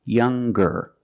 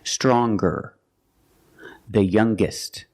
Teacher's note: When we change these adjectives with er or with est, we're going to pronounce the g sound, the hard g. So it's younger, with a g sound.